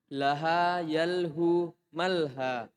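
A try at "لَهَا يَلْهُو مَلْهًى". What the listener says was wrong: tanwin. Apa tanwin? Harus ditanwin. Malhan, mas'an. Ayo, ulang.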